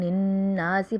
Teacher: نون مشدد ہے اس لیے ہم مشدد حرف کو ہم اتنی دیر میں پڑھیں گے جتنی دیر میں دو حرف ادا کیے جاتے ہیں۔ نون میں الف مدہ ہو رہا ہے، ایک الف کی مقدار ہم وہ بھی کھینچیں گے۔